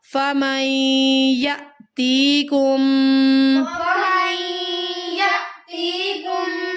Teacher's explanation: فمن یا کو حمزہ کے ساتھ ملاتے ہوئے ہم نے یہاں پر جھٹکے کے ساتھ پڑھنا ہے.